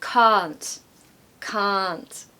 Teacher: sure you elongate that a in C that's quite a long a in the accent that I have